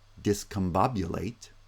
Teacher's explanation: The vowel changes to schwa, and that's why in the pronunciation of discombobulate, the by is just a schwa, but all of the other vowels are clearly pronounced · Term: vowel reduction